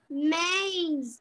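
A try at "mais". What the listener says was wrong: No, dear. It is not May. In French, how will you read? A pronunciation, how will you read in French? A in French.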